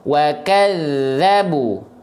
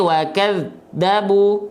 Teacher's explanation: Rokhwah itu artinya mengalir suaranya, mengalir, oke, suaranya. Nah, ketika zal bertasydid suaranya harus ngalir betul-betul. Jangan sampai wa kadzabu.